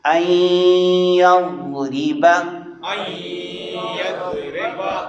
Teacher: نون آگے یا میں داخل ہو جائے گا، ادغام ہو جائے گا